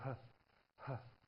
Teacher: the glottis at the vocal folds, you can create friction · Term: glottal